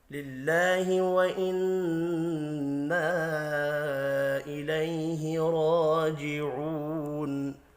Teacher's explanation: نون مشدد پر غنہ کرنا ہے